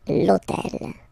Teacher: this hôtel, okay, because it starts with H, but remember that in French we don't pronounce H, okay, so basically the first sound of the word is the vowel O , okay, so for the same reason, needs to disappear, l'hôtel,